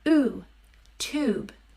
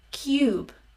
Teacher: There's a U without the Y sound as in oo, tube. And with the Y sound, which in the IPA is actually a J, cube. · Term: long U